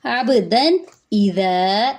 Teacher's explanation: تنوین کے فوراً بعد حمزہ آ رہا ہے تو یہاں پہ اظہار کریں گے, تنوین کی آواز کو ظاہر کریں گے. عبدن اذا, ذا پہ الف مدہ ہے, ایک الف کے برابر لمبا کریں گے.